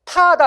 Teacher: 자, 타다라고 하면 티읕이 터지죠, 그쵸? 타다 이렇게 터집니다, 여러분. 혀 끝에서 터집니다. 파열음입니다.